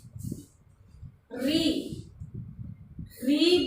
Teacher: री बोलते ही जीभ जो है वो मूर्धा स्थान की तरफ जा रही है। ध्यान से देखें, री बोलते ही जीभ जो है वो मूर्धा स्थान की तरफ जा रही है, तो ये क्या हो जाएगा, मूर्धन्य।